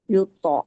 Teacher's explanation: tonya itu dibaca tebal, merupakan qalqalah subro karena berada di tengah-tengah